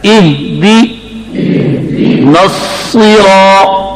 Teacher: زبان کا درمیان تالوں سے چمٹ جائے، سواد موٹا بھی ہو اور آواز بھی تیز